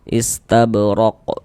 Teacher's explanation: Jadi kalau kita baca Al-Quran kita berwakaf tuh di huruf qalqalah tuh dia menjadi qalqalah kubra, menjadi qalqalah besar kayak gitu. Kalau berwakaf berhenti di huruf qalqalah menjadi qalqalah kubra.